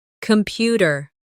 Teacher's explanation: The stress is on the second syllable. Compu tear.